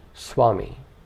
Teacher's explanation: u to a gives us v, which is sometimes pronounced by rounding the lips as in Swami.